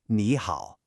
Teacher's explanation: Technically, both of these words have a third tone. But when you put two third tones together, the first one actually changes to a second tone, just to make it flow better. So we say it like ni hao, a rising tone followed by a dipping tone.